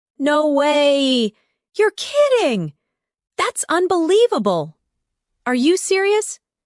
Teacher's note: Feel the rise in your voice when you express surprise. The energy in your tone makes the English feel alive.